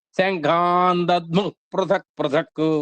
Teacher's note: చాలా పండితులైన వారు దధ్ముఃలో ఆకాంక్షను కూడా ఉచ్చరించగలరు